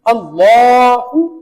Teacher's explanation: یہاں لام کے اوپر شد ہے لام کو 2 بار پڑھا گیا